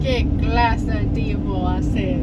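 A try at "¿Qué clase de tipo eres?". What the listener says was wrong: ¿Qué clase tipo hacer? It means what type of man, homie. But you're saying it like it's almost like you're admiring. Like, oh, what type of a man is that?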